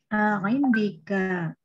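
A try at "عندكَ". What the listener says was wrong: Indaka ya. Aywa indaka. Kalau tadi kedengaran indika ya. Indaka.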